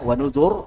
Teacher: ra sukun sebelahnya dhammah tebal